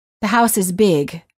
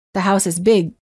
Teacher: Sometimes the sound is released, as in, the house is big, or it's held, as in, the house is big.